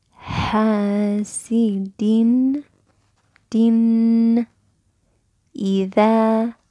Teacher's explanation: you pronounce that noon clearly for 1.5 seconds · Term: clarity